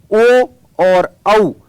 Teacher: ओ और औ का उच्चारण स्थान कंठोष्ठ होगा।